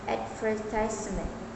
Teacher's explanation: In American English, it is often stressed on the first syllable